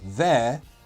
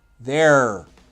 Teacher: traditionally, as you know, British English doesn't pronounce the R at the end of words.